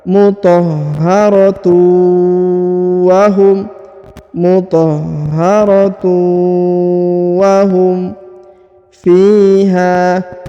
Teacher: Huruf tanwin harokat un bertemu dengan waw bertasdid, maka ditahan, ditekan, dileburkan, didengungkan 2 harokat.